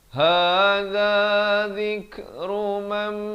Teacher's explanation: Asalnya mim baris atas bertemu nun memang bunyi man, tapi bila datang mim jadi masuk beserta dengung 2 harakat.